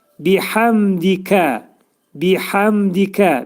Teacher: Biəmdikə də bi həm hə hərfi boğazın ortasından çıxarılır və ə şəklində deyilir. Bəzi vaxtlar bunu hamd şəklində deyirlər.